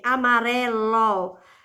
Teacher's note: Amarelo já não é a última sílaba é a penúltima